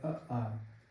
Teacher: जब हम आ का उच्चारण करेंगे तो ओठ गोलाकार नहीं होंगे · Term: अवृत्तमुखी